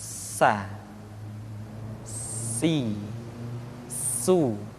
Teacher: Di antara sifat yang menonjol ketika kita mengucapkan huruf sa atau huruf sin adalah sifat as-safir, di mana ketika kita mengucapkan huruf sa ada suara tambahan yang menyerupai dengan suara belalang.